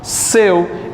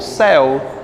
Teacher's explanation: seu ele é um ditongo aberto ou fechado fechado se fosse aberto seria como céu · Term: ditongo fechado